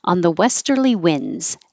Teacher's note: you won't hear the D at all and it'll sound like wins